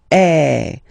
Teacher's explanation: I mean, the sound is really open, and normally your mouth should be opened a little bit more than with the accent aigu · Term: accent grave